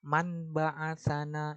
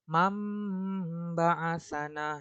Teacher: Jadi, ketika nun mati bertemu ba, dia bukan man ba'asana, itu salah, tapi mam ba'asana. Nah, nunnya ini yang dirubah menjadi huruf mim, mim mati.